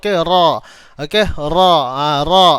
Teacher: huruf ra dia berada di hujung lidah. Okey, hujung lidah. Ditemukan atau ditekan ke lelangit atas. Ditekan ke lelangit atas.